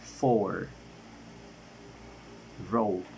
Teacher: According of voicing it is voiced. According of the place of articulation it is palatal. According of manner of articulation it is liquid.